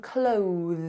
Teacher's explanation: Okay, and it's the same with a voiced TH, like in clothes. So you have to make your voiced TH and then pull it in to make the Z sound. So we go Z, Z.